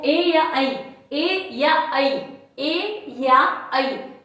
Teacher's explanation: तो ये दो है, ये कंठ और तालव्य, के और टी दोनों पे मिलकर बन रहा है, के और टी, कंठ और तालव्य दोनों से मिलकर बन रहे हैं